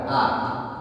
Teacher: Huruf haki ya, huruf dalam tenggorokan. Posisinya bareng sama dengan h. Ini paling bawah. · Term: hamzah